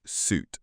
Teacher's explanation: We pronounce suit with the long oo as in boot.